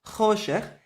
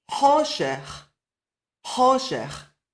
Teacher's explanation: Now in Yemenite Hebrew, there is a proper distinction between the soft kaf and the chet. The soft kaf in Yemenite Hebrew is the ch, and the chet is further back in your throat, a proper guttural ch. So, where in modern Hebrew they say choshech for darkness, choshech, in Yemenite Hebrew they'll say choshech.